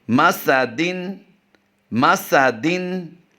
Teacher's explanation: सिन की सीटी अदायगी से करेंगे